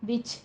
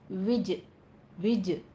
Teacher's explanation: विज में जीम के ऊपर आपने कलकला करना है, और याद रहे इसमें सांस की आवाज़ नहीं आनी चाहिए, हमस नहीं करना, विच नहीं कहना, विज विज।